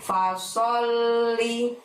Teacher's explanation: Sok di sana menghadap lam tasydid, maka pada saat mengucapkan sol ditahan, ditekan, baru bunyi li. Li-nya pendek ya.